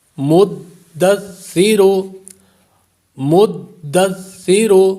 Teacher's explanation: سا پر سیٹی کی آواز پیدا نہیں ہوگی، دال کو جماؤ سے ادا کریں گے